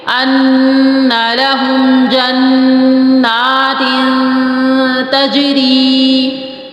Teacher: ان لهم جنات، پھر دو زے کی تنوین ہے، دو زے کی تنوین کے بعد تا آ رہا ہے، تو یہاں پر پھر وہ اخفا ہوگا. اچھا، اخفا کیسے ہوگا کہ آواز جو ہے تا کی مخرج کی طرف آواز جائے گی